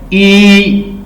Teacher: जैसे आप ई कहेंगी तो आपके दोनों लिप्स जो हैं वो साइडों पे हो जाएंगे।